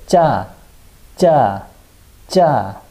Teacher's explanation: And lastly, we have 쌍지옷. So we just write two jiot right next to each other, and it sounds like very tense G.